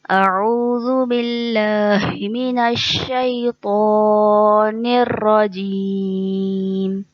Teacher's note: निर्रजीम निर्रजीम रॉ के ऊपर ज़बर है। जब रॉ पे ज़बर होता है तो कायदे के मुताबिक रॉ को पुर पढ़ा जाता है, मोटा पढ़ा जाता है